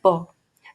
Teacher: बाइलेबियल का मतलब दोनों होठों से, और प्लोजिव का मतलब कंप्लीट क्लोजर और एंड बर्स्ट, और वॉइसलेस मतलब बिना वाइब्रेशन के। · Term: वॉइसलेस बाइलेबियल प्लोजिव